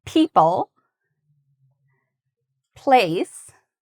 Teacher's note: So B and P, we do the exact same thing with our mouth and lips. The difference is the P sound, it's what we call a voiceless sound. So our larynx or this area doesn't vibrate when we make it.